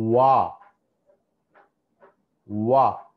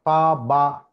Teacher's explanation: వా అన్నప్పుడు చూడండి, ఇవి రెండు తగలలేదు, లైక్ పా, బా, ఇవన్నీ పెదాలు రెండు కూడా టచ్ అవుతాయి. కానీ వా అన్నప్పుడు రౌండ్ లిప్స్ అన్నట్టు, లిప్స్ రౌండ్ షేప్లోకి వచ్చేస్తాయి.